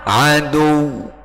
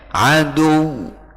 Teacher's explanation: Yang penting ada tekanan ke huruf wawu ya, untuk menunjukkan itu tasydid ya.